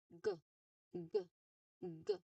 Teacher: Now the G here, it sounds like G, G, G. So the back of your tongue still stops the air just like letter K. But of course here, it's voiced. When we say voiced sound, your throat vibrates when you say it.